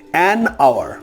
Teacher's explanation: Here I have crossed H just to show you that in this particular word here H is almost non-existent, or we should say H is non-existent from the perspective of pronunciation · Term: H is silent